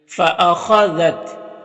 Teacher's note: یہاں پر خا حروف مستعلیہ میں سے ہے تو اسے پر پڑھیں گے